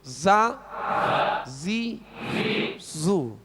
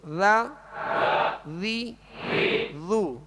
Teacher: زا کو سیٹی کی آواز میں سختی سے پڑھیں گے اور ذال کو نرمی کے ساتھ پڑھیں گے